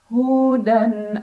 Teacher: halqi karena ada tanwin fathah bertemu dengan huruf hamzah cara bacanya tanwin fathah dibunyikan dengan bunyi asal bunyi an dan tidak perlu kita tahan bunyi annya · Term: izhar halqi